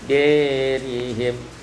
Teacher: imalatu fathah dal wal alif, baca imalah fathah dal dan alif